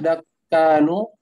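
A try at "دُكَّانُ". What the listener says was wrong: dukan, bukan dakan, dukan. Bukan dakan, tapi dukan.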